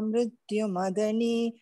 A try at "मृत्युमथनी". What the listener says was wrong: okay concentrate on महाप्राणास्म it is not मदनी it is मथनी okay